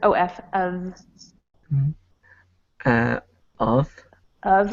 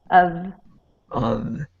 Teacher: instead of an F sound, think V.